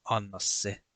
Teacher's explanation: Individually, these words are just anna and se, but when you say them together, they are anna se. So the second word begins with a long S sound.